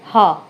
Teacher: सबसे बड़ी बात, आप इतना भी याद रख लेंगे तो भी काफ़ी है कि काकल में मुख विवर खुला रहता है और काकल वर्ण एक ही है, वो है हा